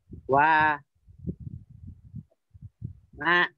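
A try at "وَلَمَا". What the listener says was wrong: Kan nomor dua itu la. Wa, la, ma. Wa, la, ma.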